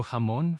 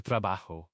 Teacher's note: It's always a breathy H.